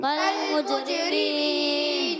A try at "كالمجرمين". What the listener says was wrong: کاف کو باریک رکھنا ہے، موٹا نہیں. قول، قول کی آواز آئی ہے. کل، کل، کالمجرمین.